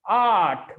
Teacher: because our r sound is silent here so that it is pronounced as art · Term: r is silent